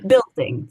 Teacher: a dark L uh we tend to use at the ends of words or before consonants like in building